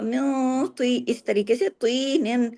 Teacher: من نون ساکن کے بعد تو ہے، تو کیا ہو رہا ہے یہاں پر اخفا حقیقی غنہ کاملہ